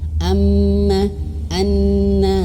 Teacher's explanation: kalau ada tasydid di atasnya maka harus ditekan ya harus ditekan kalau huruf mim dan Nun itu tekanannya harus ditahan artinya harus gunah